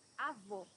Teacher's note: Here you have a closed O